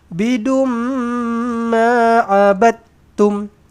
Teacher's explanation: Jumpa mim sabdu. Rapatkan bibir. Dengungkan dua harakat. Idgham maal ghunnah.